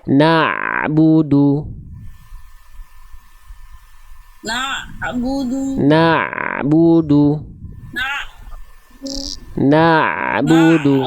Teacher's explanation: rasakan ain itu dilafalkan dari bagian tengah tenggorokan.